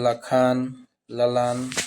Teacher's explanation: ल जो है दंत वर्ग है अल्पप्राण भी है और सघोष है